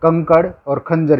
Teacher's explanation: अनुस्वार का उच्चारण केवल नाक से किया जाता है